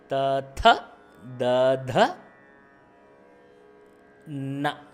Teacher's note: இது வந்து பல்லுக்கு பின்னாடி, த வந்து பல்லை பயன்படுத்தி பண்ணுறது